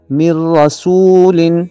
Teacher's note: یہاں پہ ادغام ہوگا اور غنہ نہیں ہوگا۔ من رسول، اس کو من رسول پڑھنا غلط ہوگا۔